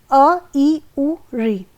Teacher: ह्रस्व स्वर वे स्वर होते हैं जिनके उच्चारण में बहुत कम समय लगता है, अर्थात एक मात्रा काल का समय लगता है